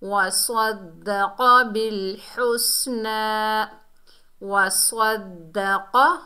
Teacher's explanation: वस्वद्दक़, वाव के ऊपर ज़बर बगैर खींचे पढ़ेंगे। स्वाद जो है हुरूफ़ मुस्तालिया में से है, मोटा अदा होगा। और दाल जो है मुशद्दद हर्फ है, दाल के ऊपर तशदीद है, मजबूती और जुमा से पढ़ेंगे।